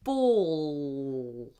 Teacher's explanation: if the L is at the end of the word or if it's before a consonant, we do a weird kind of L, a dark L, where we basically push the whole tongue up as high as it will go and we go ball.